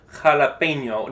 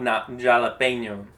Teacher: it's kind of like a H sound in English, but it comes from a little further back like a H sound.